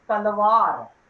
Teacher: the initial sound of talwar is a dental sound because the tip of the tongue touches the teeth while we pronounce this sound.